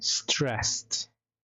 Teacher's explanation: Sebelum ed dia itu suaranya konsonan voiceless, maka pasti dibaca T ed-nya. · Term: Ed sound